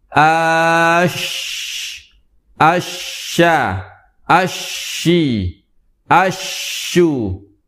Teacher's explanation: tiga huruf tersebut keluar dari lidah bagian tengah menempel ke langit-langit bagian atas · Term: huruf syin